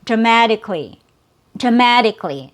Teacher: we don't have a vowel sound after the k sound